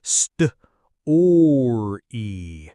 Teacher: you'd really round your lips for the st, and then curl your tongue back for that English R sound.